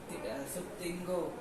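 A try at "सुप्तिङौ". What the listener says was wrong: देखो दो गौ नहीं बोला है। सुप्तिंगौ सुप्तिंगौ तिंगौ तिंगौ नहीं, ग दो कौन कर दे रहा है? तिंग गाँव ऐसे बोल रहे हो तो दो गाँव हो रहा है।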